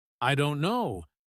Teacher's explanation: The stress is on don't, not on I or no.